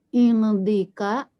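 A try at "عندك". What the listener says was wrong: Indaka. Ya, bukan indika tapi indaka.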